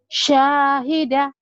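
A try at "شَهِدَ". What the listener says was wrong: Syahida nggak ada yang panjang, Bu. Ini nggak boleh. Syahida nggak boleh dipanjangin ya. Nanti artinya lain.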